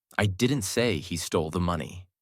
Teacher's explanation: Stress on stole changes the meaning.